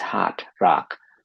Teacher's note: interestingly in American English this sounds like ah